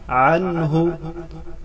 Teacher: ما اغنا عنہ، عنہ عین کو گلے کے درمیان سے ادا کریں. عن، نون ساکن کے بعد حروف حلقی میں سے ہا آ رہا ہے، یہاں اظہار حلقی ہوگا.